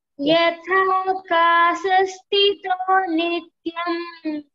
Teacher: There are two mahapranas, stha and again yatha kasha. So there are two places you have mahaprana.